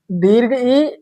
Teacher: यह दो स्वर ऐसे हैं जिनका उच्चारण करते समय हमारे मुख की मांसपेशियां दृढ़ यानी कि कठोर हो जाती हैं। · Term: दृढ़ स्वर